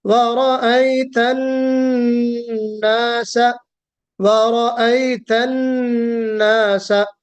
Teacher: वाव मुंह गोल करना है, होठों का गोल होना जरूरी। वा रा को मोटा पढ़ना है।